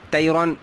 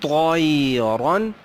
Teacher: طیرًا نہیں طَيْرًا را موٹا دو زبر آگے ہیں